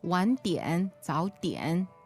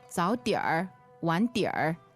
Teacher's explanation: Southerners, they don't like to add this r afterwards.